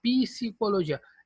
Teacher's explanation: É como se tivesse um I entre o P e S